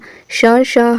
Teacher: श श ह ये किस में आते हैं, ऊष्म में आते हैं।